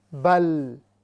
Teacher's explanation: اعوذ باللہ من الشیطان الرجیم، بسم اللہ الرحمن الرحیم. بل، لام یہ مرقوقہ ہے، یہ باریک ہوگی